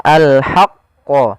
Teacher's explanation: qa-nya ditasydidkan, kita tebalkan dulu